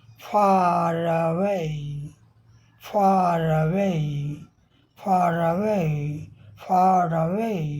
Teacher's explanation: ये आर शब्द जो है चला जाएगा इसमें अवे में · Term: लिंकिंग आर